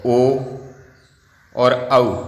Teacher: ओ और औ का कंठोष्ठ है उच्चारण स्थान